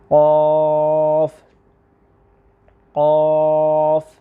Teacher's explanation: زبان کی جڑ کو ساتھ ساتھ لازمی اٹھانا ہے، کیونکہ یہ حروف مستعلیہ میں شامل ہے 2 نقطوں والا قاف، تو اس کو ہم نے پر کرنا ہے۔